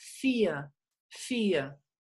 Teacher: la R al final es tan suave como si fuera una A